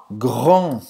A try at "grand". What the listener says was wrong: Grand. Presta atenção aqui ao R. Tem que treinar, tá? Grand. Grand. E o D não vai falar. Grande. Grand.